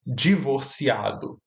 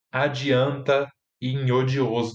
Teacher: tem o d ocorrendo como j antes de i